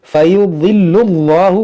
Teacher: اس میں جلالت ہے اور اس سے پہلے پیش ہے تو اس کو موٹا پڑھیں گے